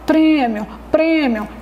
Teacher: a gente pronuncia é como se estivesse saindo do nariz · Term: som fechado